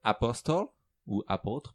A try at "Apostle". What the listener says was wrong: Apostle? Y a pas ben, tu prononces pas le T, en fait. Apostle.